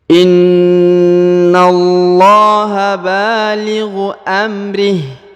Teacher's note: huruf na ditahan dan ditekan 2 harokat ya